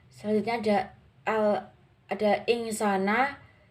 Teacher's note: huruf nun mati bertemu dengan huruf sin cara membacanya samar-samar membentuk huruf Sin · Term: ikhfa Haqiqi